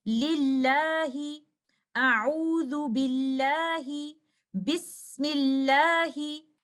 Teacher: if the lam in Lafzul Jalala has a kasra before it, whether it is connected to it or in a different word, we recite the lam in Lafzul Jalala with tarqiq